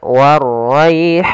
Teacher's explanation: Kemudian ra-nya tebal, waraihan. Kemudian pada lafal rai, di sini ada bacaan lin, bacaan yang lembut dalam pelafalannya.